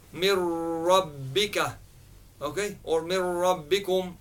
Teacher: You don't hear any noon sakin there at all. There is no hiding, there is no nasalization or anything like that. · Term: complete